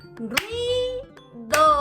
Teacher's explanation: van estas dos vocales unidas en un mismo golpe de voz, es decir, en una misma sílaba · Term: diptongo